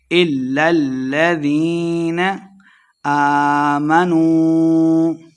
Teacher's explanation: واو مد ہے، 2 حرکات لمحہ کر کے پڑھیں گے